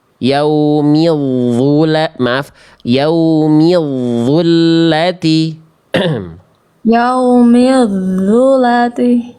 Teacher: huruf vo dengan huruf zal ini satu makhraj, ujung lidah bertemu dengan ujung gigi seri atas.